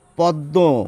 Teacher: এখানে একটি নাকি উচ্চারণ এসে যায়, সেই জন্য চন্দ্রবিন্দু দিয়ে প্রকাশ করা হয়।